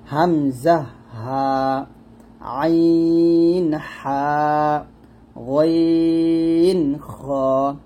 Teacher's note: হামজা হা শুরু থেকে, আইন হা মাঝখান থেকে, আর গইন খ হচ্ছে শেষ থেকে। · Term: হরফে হালকি